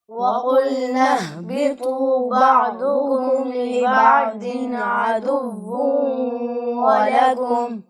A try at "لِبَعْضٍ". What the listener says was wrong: جی بیٹا ضاد کو آپ نے باریک پڑھا ہے لِبَعْضٍ میں، تو چاہے ضاد کے اوپر زبر ہو، زیر ہو یا پیش ہو، جس صورت میں بھی حرف ضاد یعنی حروف مستعلیہ میں سے جو بھی